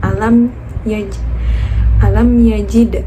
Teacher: alam di situ izhar syafawi karena huruf la bertemu dengan mim sukun, jadi dibaca jelas huruf lamnya.